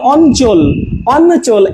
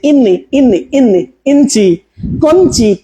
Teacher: এখানে হবে আগে ইও, ইওর জন্য নয়ের মতো উচ্চারণ হবে এবং পরে চ। ঠিক আছে, যেমন অঞ্চল, অঞ্চল, এই যে দেখেন নয়ের মতো চলে আসছে, ইওর মতো উচ্চারণ হচ্ছে।